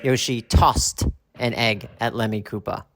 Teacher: we use the T sound because the S Cannot Be Sung